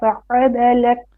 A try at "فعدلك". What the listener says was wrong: Relax your عين. Don't say don't tense your throat. Relax. Not no, don't tense it.